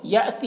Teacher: हमज़ा साकिना है, झटका लगाकर पढ़ेंगे